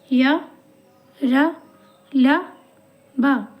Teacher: ऐसे व्यंजन जो कि स्वर और व्यंजन के बीच में होते हैं। और ये जब हम इनका उच्चारण करते हैं तो ये मुख के किसी भी भाग को पूरी तरह से टच नहीं करते हैं। और ये हैं चार तरह के य र ल ब आप बोल के देख लो आपको पता चल जाएगा। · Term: अंतस्थ व्यंजन